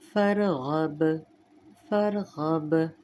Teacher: یعنی با کو نمایاں پڑھیں گے قلقلے کے ساتھ. وقفاً فرغب، فرغب.